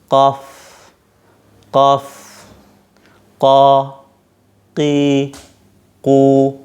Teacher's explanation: qaf itu pangkal lidah ketemu dengan pangkal langit-langit ya, langit-langit mulut